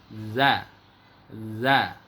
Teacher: ujung lidah, ujung gigi seri atas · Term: zal